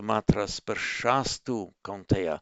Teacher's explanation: the visarga there becomes a s before the following t